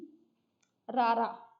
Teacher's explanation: ਰਾਰਾ ਜਦੋਂ ਆਪਾਂ ਬੋਲਦੇ ਹਾਂ ਤਾਂ ਸਾਡੀ ਜੀਭ ਹੈ ਜਿਹੜੀ ਥੋੜੀ ਜਿਹੀ ਅਗਲਾ ਹਿੱਸਾ ਥੋੜਾ ਜਿਹਾ ਟੱਚ ਹੋ ਕੇ ਨਾਲ ਦੀ ਨਾਲ ਨੀਚੇ ਜਾਣ ਦੀ ਕੋਸ਼ਿਸ਼ ਕਰਦਾ ਹੈ, ਜਿਹਦੇ ਕਾਰਨ ਇੱਕ ਆਪਾਂ ਕਹ ਲਈਏ ਕਾਂਬਾ ਪੈਦਾ ਹੋ ਜਾਂਦਾ ਨਾ ਜੀਭ ਦੇ ਵਿੱਚ, ਤਾਂ ਤੁਸੀਂ ਇਹਨੂੰ ਬੋਲਦੇ ਹੋ ਕਾਮਵੇਂ ਵਿਅੰਜਨ।